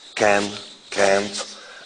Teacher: What you have is can, can't, and then nasalization and deletion of the nasal. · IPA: [kæn], [kænt], [kæn]